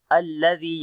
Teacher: لام کو باریک پڑھیں گے، زال کو نرم پڑھیں گے، لمبا بھی کریں گے